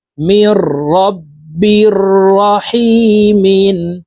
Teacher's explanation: নুন সাকিনের পরে ইদগামে বেলাগুন্নার হরফ র আসছে এই কারণে এই মিম তাশদি র সাথে গুন্না ছাড়া পড়বো মাঝখানে জুমলা নুন বাদ পড়ে যাবে মিম র জের মির র